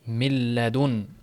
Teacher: Nun harfi sukuni nun milladun o'qiladi. Milladun nun harfi butun yo'qoladi. Minlad emas. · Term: g'unnasiz idg'om